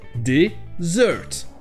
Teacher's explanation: Donc nous avons la première syllabe non accentuée avec le son e, d, et ensuite la deuxième syllabe avec le son bien long et accentué